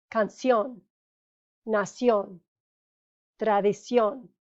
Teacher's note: the accent is on the last syllable instead of the second to last, so it breaks the rule.